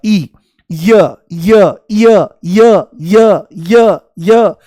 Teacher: जैसे ही य बोलोगे तो इ शुरू में महसूस होगा। इ य य य य य य य जैसे सीढ़ी अटक गई हो तो इ की ध्वनि आती है। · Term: अर्ध स्वर, अर्धस्वर